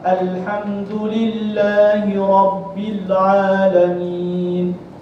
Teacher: Alif lam qamariyah ialah apabila alif lam bertemu dengan salah satu huruf-huruf alif lam al-qamariyah dengan menyatakan bunyi huruf lam tanpa dengung